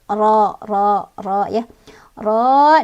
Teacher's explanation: Ro-nya punya hukum tafkhim karena ro-nya berbaris fathah. Artinya dibacanya tebal, seolah-olah bunyi huruf ro ini memenuhi semua rongga mulut. Ro ya. Ro, dan juga ini ada hukum mad tabi'i karena ada alif, sebelumnya ada fathah di huruf ro ya, dibacanya panjang 2 harokat.